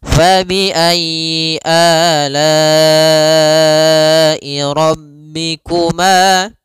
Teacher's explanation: Muttasil itu disebabkan karena adanya hamzah yang dia datang setelah huruf mad dan hamzah tersebut berada di dalam satu kata. Panjang untuk mad wajib muttasil sendiri yaitu 4 harokat, atau ada yang mengatakan 5 harokat dari jalurnya Imam Syatibi.